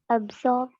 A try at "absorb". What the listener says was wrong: Thank you. Absorb. Be confident.